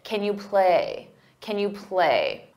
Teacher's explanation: When it's an auxiliary verb, we pronounce it as kin, unstressed, because the main verb is what you hear, play.